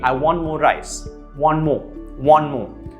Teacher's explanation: Well, you would link these 2 And the sound would be, I want more rice, one more, one more. So the T sound is dropped off, I want more rice. That's the sound you'd be left with, I want more rice.